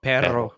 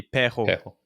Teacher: The double R is pronounced as an H sound.